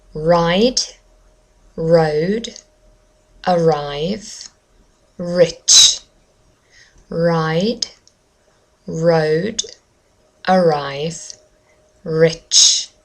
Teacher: as a general rule british english does not roll the r